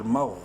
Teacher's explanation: غوین bold letters میں سے ہے، منہ بھر کے پڑھیں گے